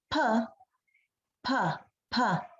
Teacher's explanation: the vocal folds don't vibrate, so this is a voiceless sound